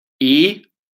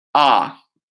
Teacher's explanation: E is the most high in front ah is the most down in back